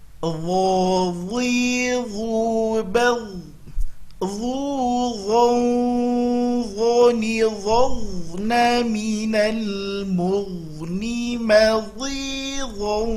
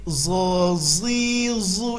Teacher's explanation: Huruf dho sama makhraj dengan huruf dha, keluarkan ujung lidah, tapi ini huruf tebal